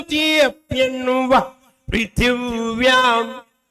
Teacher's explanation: 'पृथ्वीम' और 'व्याम' में होंठ आपस में नहीं छूने चाहिए। यदि होंठ आपस में मिलते हैं, तो एक अलग ध्वनि उत्पन्न होती है।